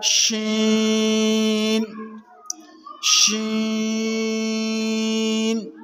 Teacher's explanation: शीन को ज़बान के दरमियान और तालु के दरमियान से अदा करेंगे।